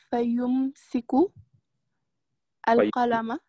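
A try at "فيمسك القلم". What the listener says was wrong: Et on dit pas, on met la liaison. On dit Fayum sekul kalama. Fayum sekul kalama. On met la liaison.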